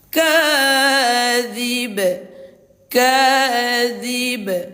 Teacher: Maka pantulannya ee kuat tetapi tipis lah. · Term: qalqalah kubra